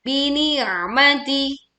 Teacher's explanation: Tekan ain sukun dengan menyempitkan suaranya. Maksudnya menyempitkan pita suaranya sehingga suara terdengar lebih berat.